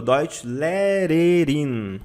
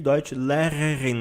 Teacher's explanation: Você pode pronunciar na ponta da língua, Deutschlehrerin, ou, se preferir, Deutschlehrerin, mas aí você vai raspando a garganta. · Muita gente apanha na hora de pronunciar o R no fundo da garganta.